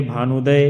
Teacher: दोनों मिलकर के क्या बन जाएंगे बड़ा उ यानी कि दीर्घ हो जाएगा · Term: दीर्घ संधि